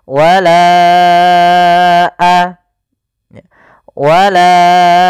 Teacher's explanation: pada lafal lanya maka kita namakan dengan Mad Jaiz munfasil maka kita panjangkan huruf laanya sepanjang empat harakat atau lima harakat Bagaimana cara membacanya wala a baru baca a panjangkan lanya dulu · Panjangkan la-nya dulu 4 harokat baru lepas.